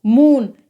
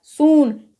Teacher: Double O का उच्चारण ऊ के रूप में यानी कि लॉन्ग साउंड में होगा। तो MOON को हम क्या पढ़ेंगे, मून।